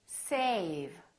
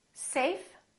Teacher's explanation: notice how a was longer with the V then with the F